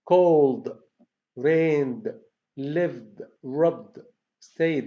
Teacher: These are pronounced as D because they end, the verbs end with voiced sounds. So voice sound ed, it becomes D.